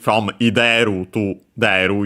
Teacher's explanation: they simply dropped the initial i